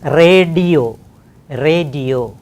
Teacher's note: this is a retroflex sound when we say radio it's a different sound